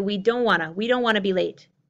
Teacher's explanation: The T on don't is held back, is not released. You don't hear, we don't want to.